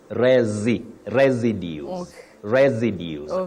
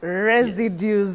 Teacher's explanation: you have the S the first s and the second one takes what we call the voice sound z